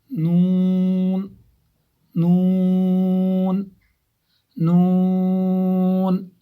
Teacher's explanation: जुबान का किनारा एक नाभ से लेकर दूसरे नाभ तक और ऊपर के दांतों के मसूड़े